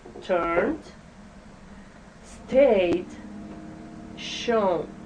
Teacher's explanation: For those verbs with the voiced ending, the ed is pronounced d.